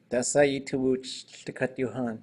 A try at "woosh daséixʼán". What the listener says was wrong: Actually, she said it with a high tone, if I remember correctly. Yeah.